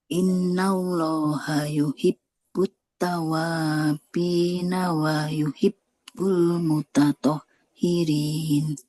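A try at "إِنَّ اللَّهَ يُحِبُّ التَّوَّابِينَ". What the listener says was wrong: Innallaha yuhibbut tawwa. Nah, wa-nya kan bertasydid harus ditekan. Innallaha yuhibbut tawwabina wa yuhibbul mutatahhirin.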